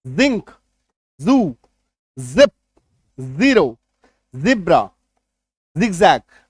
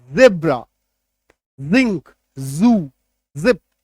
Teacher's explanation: देते हैं तो इसका जी जड हो जाता है ठीक है जब नुक्ता लगाते हैं तो हल्का सा बज का साउंड आता है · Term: ज नुक्ता के साथ